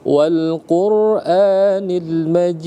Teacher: Dal kalau kita berhenti, maka sifatul huruf dal itu memantul. Maka berlakulah hukum qalqalah ya.